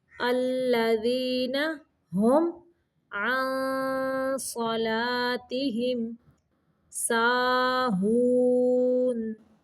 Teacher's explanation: ہم پہ اظہار شفوی کا قاعدہ ہے، میم کو صرف ظاہر کرنا ہے، غنہ نہیں کرنا